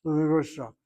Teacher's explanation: With 5 syllables, we emphasize the middle syllable to get through that word